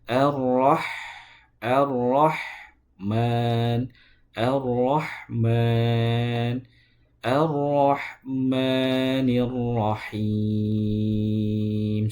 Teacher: Tidak boleh ditebalkan sifatnya rnya dan ha juga jangan lupa diucapkan atau dikeluarkan di tengah tenggorokan bukan di pangkal tenggorokan karena akan menjadi ha arrahmanirrahim tapi arrahmanirrahim.